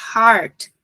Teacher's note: o Heart tem que ser aberto é a é para cima eu não posso fechar ele e colocar para baixo